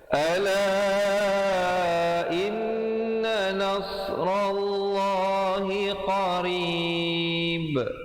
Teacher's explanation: Ba-nya diberikan pantulan qalqalah kubra di situ, walaupun asalnya hidup tetapi diberikan mati kerana waqaf.